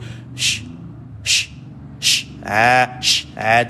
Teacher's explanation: Nak membezakan dia tadi, satu ada sifat safir, ada mendesir pada shin, ada sifat tafashi, dia ada hambur.